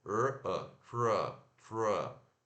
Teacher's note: ao invés de falar ter, fala T-R schwa